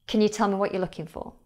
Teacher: the sound in the word you is shorter than a lot of people would expect.